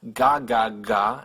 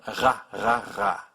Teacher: It's pronounced using the back of your tongue, which pulls back all the way behind where you pronounce a G. So you have ga, ga, ga, and ra, ra, ra. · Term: the French R